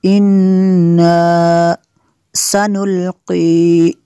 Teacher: انا نون مشدد ہے، یہاں پہ غنہ کریں گے